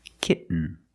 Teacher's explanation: We have to make a stop t and link it to the n.